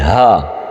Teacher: ہا موٹی ہونی چاہیے جو حلق سے نکلے گی